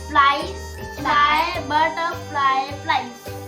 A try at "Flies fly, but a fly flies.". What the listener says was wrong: फ्लाइज और फ्लाई ही है. Flies fly, but a fly flies.